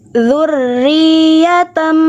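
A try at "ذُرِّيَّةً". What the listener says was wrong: Yang di nabar ya-nya. Zurriya, jangan ro-nya nabar tapi nabarnya kuatan ya. Jadi jangan terlalu kuat ro-nya. Zurri di atas dia kurang nabar. Yang nabar kuatnya ya.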